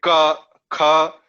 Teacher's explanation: You can clearly notice that these are ordered in a certain sequence, and that sequence is according to the place in your mouth, in your vocal system, right from the back of the tongue or just top of the throat, starting from there, which is known as kantha. From there, if you say ka, kha, you will notice that the muscles of that region in your mouth is where the articulation or the motion comes from.